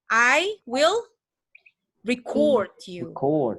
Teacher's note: ketika dia mau dinyatakan sebagai verb, maka dia harus di-stress di second syllable